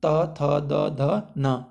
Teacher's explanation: मतलब इसे बोलते समय हमारे जो जीभ है वो हमारे दांत में स्पर्श होती है, इसलिए हम इसे दंत्य बोलते हैं